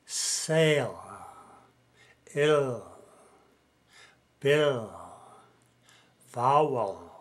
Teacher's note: at the end of a word L is also pronounced with air from the lungs but it is pronounced even longer